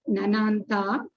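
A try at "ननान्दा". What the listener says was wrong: Nananda, not Nananta. Nananda.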